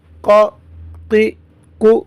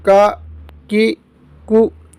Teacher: یہ قاف جو نقطوں والا ہے یہ حروف مستعلیہ میں سے ہے، موٹا کر کے پڑھیں گے، اور یہ جو کاف ہے یہ باریک پڑھیں گے